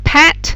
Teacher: your lips are both together and air explodes out of between them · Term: P sound